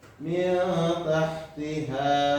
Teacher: Nunnya itu tidak jelas, tidak dimasukkan, tidak berganti, tetapi samar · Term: ikhfa